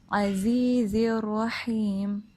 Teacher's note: ہا بھی وسط الحلق سے ہی ادا ہوتا ہے